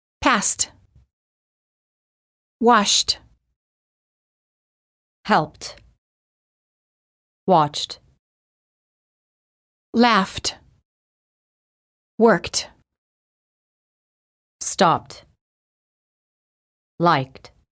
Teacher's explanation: if the last letter of the word ends in a voiceless consonant the E is silent and the D is pronounced as t